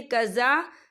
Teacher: زال کے پر کھڑی حرکات ہے تو ہم اسے 2 یا 3 حرکت کے برابر کھینچے پڑھیں گے